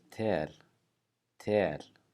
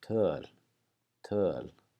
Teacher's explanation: these two words are pronounced the same except in the second one your lips are rounded but the the placement of your tongue is the exact same